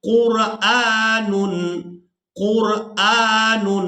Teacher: ہم یہاں پر حمزہ کو کھڑی زبر کی وجہ سے کھینچ کر ادا کر رہے ہیں